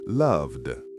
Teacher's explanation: Love ends with a V sound, which is voiced, so loved is loved.